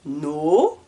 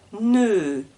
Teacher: Donc au début, je suis devant, ne, et la langue recule de à peu près 1 cm dans la bouche. Donc avec le O, la langue est au fond, no. Avec le E, la langue reste devant, ne